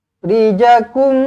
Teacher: rapatkan bibir dengungkan dua harakat